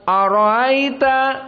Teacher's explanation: Abu Ja'far pada ara'aita ditashil hamzah ats-tsani.